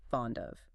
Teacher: If you read it exactly as it is written, treating each word as an isolated island, you articulate it as fond of. You create a glottal stop between the D and the O.